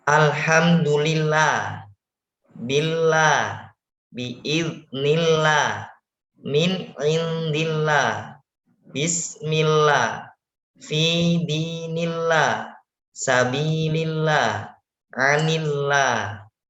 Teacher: lafaz Allah apabila sebelumnya berharokat kasroh, maka dibaca tarqiq, tipis